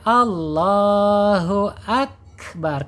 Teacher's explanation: kapnya dihamaskan, dikeluarkan napasnya